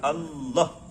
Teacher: Lam ujung lidah. Ujung lidah tempelkan ke langit-langit. Ujung lidah tempelkan ke langit-langit.